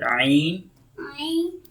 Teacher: So ain will produce from middle throat